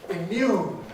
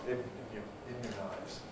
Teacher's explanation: Immune has a strong oo, but into immunize, we get this weakening to the thank you vowel, immunize. And I may say in some varieties of English, the thank you vowel goes to schwa and becomes people say thank you, something like that, and say immunize.